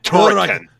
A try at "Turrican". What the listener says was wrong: No, you gotta roll the R's. Turrican. Turrican.